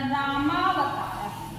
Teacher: यानी दोनों तरफ ह्रस्व आ के मिल करके दीर्घ आ हो गए हैं